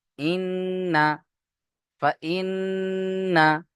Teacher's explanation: ফা হামজা নুন জের ইন নুন জবার না ইন্না ইন্না এখানে নুনের উপরে তাশদিদ ওজিব গুন্না তাই এখানে গুণনা করবেন সবাই কিন্তু ফাইন্না বলে টান দেবেন না